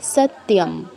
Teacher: শয়ের পর ত আছে, তো আমরা ত বলবো, ই আনবো না এক্সট্রা